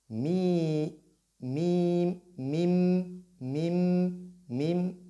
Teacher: Mim se termine par mi, mim, mim, mim, mim. Donc les lèvres doivent se joindre.